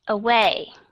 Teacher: Cái âm schwa sound, đọc nhẹ và lướt qua. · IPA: ə